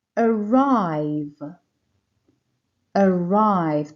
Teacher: the stress here is on the second syllable